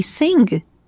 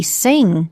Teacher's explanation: Of course, we teach students that you don't pronounce in the NG, the sound, which is very nasal, you don't pronounce the G